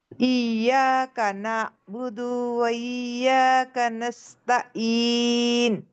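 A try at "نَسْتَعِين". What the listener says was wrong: अच्छा, ये आइन पे सुकून है ना, तो थोड़ा हमें रुकना है वहां पे। नाबुदु, नाबुदु। यस, हाँ, थोड़ा होल्ड करना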